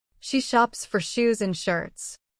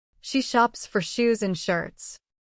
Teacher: Feel how your tongue moves back. That makes the softer sh sound.